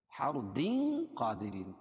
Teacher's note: تنوین کے بعد حروف اخفا کے 15 حرفوں میں سے قاف ہے تو یہاں اخفاء حقیقی ہوگا، اس میں ناک میں آواز کو چھپا کر پڑھیں گے. قا الف مدہ دیرین را باریک ہوگی اور یا ساکن سے پہلے را کے نیچے زیر ہے تو یا مدہ اس کو ایک الف کے برابر کھینچ کے پڑھیں گے.